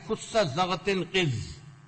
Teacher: ان حروف کو ادا کرتے وقت زبان کی جڑ تالو سے لگ جاتی ہے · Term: حروف استعلاء